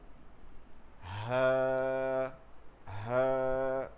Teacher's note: গম্ভীর আওয়াজে হলকের শুরু থেকে হা। কোনোভাবে গলার মধ্যে থেকে বাতাস বের হবে না, কোনোভাবে না, শুধু গম্ভীর আওয়াজে হা এর উচ্চারণ বাংলার মতন।